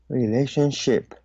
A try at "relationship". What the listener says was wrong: Relationship. So the second syllable should be pronounced as long A.